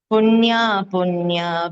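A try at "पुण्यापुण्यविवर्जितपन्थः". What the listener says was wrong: புண்ணியா புண்ணியோ தான், அது புண்ணியா புண்ணியான்னு காதுல விழுந்தது. மேபி நான் தப்பா கேட்டிருக்கலாம், பட் கொஞ்சம் அது மாதிரி கேட்டது. கரெக்ட் பண்ணிக்கோ.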